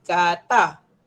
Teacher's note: kata tidak ada sengau sebab udara keluar dari rongga mulut